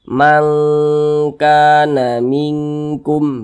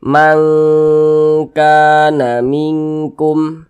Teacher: Jadi cara mengucapkannya itu dibaca samar, kemudian dia berdengung. Karena dia ab'ad, maka dia cenderung berbunyi eng. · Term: ikhfa hakiki ab'ad